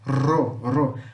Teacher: Então é esse som, ro, que vibra, ro.